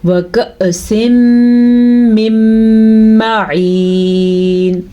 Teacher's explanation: یاد رکھیں جب کبھی اس طرح حمزہ کے اوپر الف کے اوپر جب کوئی حرکت آ جائے تو وہ الف نہیں رہتا، وہ حمزہ بن جاتا ہے. الف کے اوپر حمزہ کے اوپر جب ساکن آ جائے تو ہلکا سا جھٹکا پیدا ہوگا اور اس کو جھٹکے کے ساتھ پڑھا جائے گا